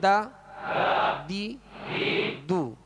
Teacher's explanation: اس میں دال کو باریک پڑھیں گے اور اس کا مخرج بھی الگ ہے. دال کا مخرج بھی الگ ہے، یعنی زبان کی نوک اور اوپر کے سامنے والے 2 دانتوں کی جڑ، یہ اس کا مخرج ہے دال کا. · تو دال کو ادا کرتے ہوئے باریک پڑھیں گے. دال زبر دا، دال زیر دی، دال پیش دو، دا دی دو.